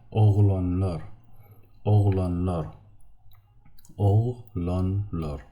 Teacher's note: Even the suffix lar, plural suffix, we make it round.